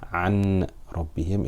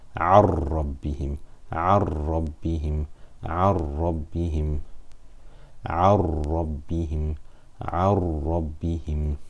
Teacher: So we will read it as one single letter without ghunnah. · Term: idgham without ghunnah